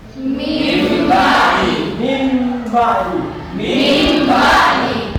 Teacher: Nah, yang menukar di sini nun matinya, nun sukunnya. Bunyi an itu ditukar kepada mim sukun · nun mati itu dihilangkan, digantikan dengan mim mati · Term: iklab, Iklab